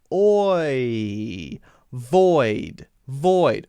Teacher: when I say void I'm not keeping my mouth in the same shape as I would with ah ah right I'm I'm changing the shape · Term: diphthong